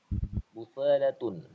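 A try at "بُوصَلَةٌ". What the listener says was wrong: bu panjang,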